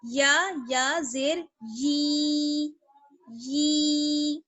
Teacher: Last ہے یا زیر یی، اس کی ساؤنڈ ایسی آئے گی، یی. ای نہیں پڑھنا ہے بلکہ یی، یا کو یا سے ملانا ہے